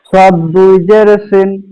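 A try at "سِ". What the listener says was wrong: জি মাশাআল্লাহ, সদ মোটামুটি ঠিক আছে, সিনটা একটু বাতাস দিয়ে পড়ার চেষ্টা করব।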